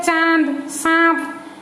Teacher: वहां पे एक आवाज अलग से आता है, जैसे कि हमारे नाक से निकलता हुआ लगता है, वो होता है अनुनासिक, जो कि हम चंद्र बिंदु कहते हैं उड़िया में। · जब हम बोलते हैं तो मुख और नाक दोनों में से दोनों की सहायता लेकर निकलता है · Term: अनुनासिक वर्ण